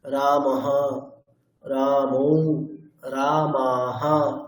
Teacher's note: বিসর্গের উচ্চারণটা হকারের মতো করে করা